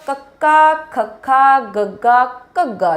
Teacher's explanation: ਸਾਡੀ ਜੀਭ ਦਾ ਪਿਛਲਾ ਹਿੱਸਾ ਸਾਡੇ ਨਰਮ ਤਾਲੂ ਨੂੰ ਛੂੰਹਦਾ ਏ, ਹਵਾ ਨੂੰ ਰੋਕਦਾ ਹੈ ਔਰ ਛੱਡ ਦਿੰਦਾ ਹੈ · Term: ਕੰਠੀ ਧੁਨੀਆਂ